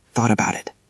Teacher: Thought about that T is between vowels. Does it get soft? It does. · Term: soft T's